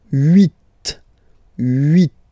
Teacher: final T is pronounced